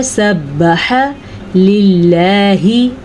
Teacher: اللہ کا نام باریک پڑھنا ہے کیونکہ اللہ کے نام سے پہلے زیر ہے۔ اگر اللہ کے نام سے پہلے زیر آ جائے یا اللہ کے نام سے پہلے زیر آئے تو باریک پڑھتے ہیں، اور اگر اللہ کے نام سے پہلے زبر یا پیش آ جائے تو اللہ کا نام پر یعنی کہ موٹا کر کے پڑھتے ہیں۔